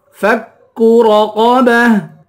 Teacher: وقف کرتے ہیں تو گولتا ہاں بن جاتی ہے، فَكُّ رَقَبَةٍ، یہاں پر چھوٹا کاف ہے، چھوٹے کاف کو باریک اور صاف پڑھیں گے ، رَقَبَةٍ، را اور قاف دونوں کو پر پڑھیں گے، رَقَبَةٍ،